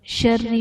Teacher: شری میں را کے نیچے زیر ہے، اس لیے را کو باریک پڑھا جائے گا۔